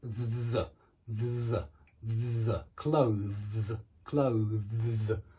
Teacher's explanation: Make sure you're voicing a kind of deep z at the end.